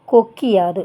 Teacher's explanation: உகரம் இகரமா மாறும் இது தன்னோட ஒரு மாத்திரை அளவிலிருந்து குறைஞ்சு அரை மாத்திரை அளவா ஒலிக்கும் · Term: குற்றியல் இகரம்